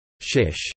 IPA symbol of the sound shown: ʃ